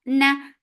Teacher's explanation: for fatha open jaws, the sound is short